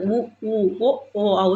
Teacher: இதழ்கள் குவிக்கிற மாதிரி வருதுடா.